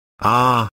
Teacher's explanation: But, not rounded, they are oval, and your tongue is relaxed, and lies flat at the floor of the mouth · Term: ah sound